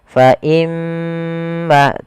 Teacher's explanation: Kita hukumi dengan bacaan gunah. Cara membacanya adalah menahan suara gunahnya.